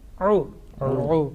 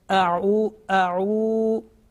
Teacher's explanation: ayn with dhamma, then ayn sound will be prolonged. Because vav madda is a letter of prolongation.